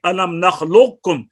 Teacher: قاف کا کاف میں جب ادغام ہوگا تو اس کی صفت استعلاء باقی رہے گی